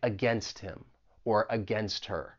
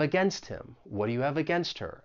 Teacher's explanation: we can link that final T in against with the vowel sound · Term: elision